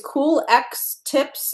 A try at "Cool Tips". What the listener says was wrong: It's Cool Tips. The X is silent for both Cool Dads and Cool Tips.